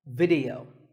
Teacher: The important thing is that both the I and the E are pronounced as short I sounds. It's not video, it's video.